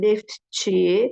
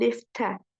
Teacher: samit hərf gələrsə burda t düşəcəkdir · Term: Düşmə hadisəsi